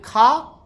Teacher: का अल्प प्राण है लेकिन खा महाप्राण है।